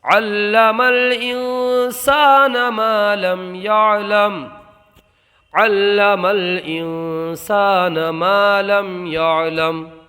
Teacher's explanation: یہاں پر یہ جو دیکھ رہے ہیں آپ، یہ نون ساکن اس میں اخفا ہوگا، الف میں مدہ ہوگا، یہاں میم ساکن میں اظہار شفوی ہوگا، اس لیے کہ میم ساکن کے بعد حرف با اور میم کے علاوہ کوئی بھی حرف آ جائے تو وہاں پر اظہار شفوی ہوتا ہے، یعنی گناہ نہیں کرتے ہیں۔